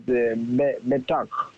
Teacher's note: we will accent the first syllable, not the second.